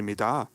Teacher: you're a fellow Midar enjoyer with the stress on the second syllable